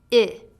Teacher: the short I sound it's represented by the capital i i the lips are in the neutral position and there is no tension on your mouth your jaw is slightly lower than for e and your tongue is high but lower than e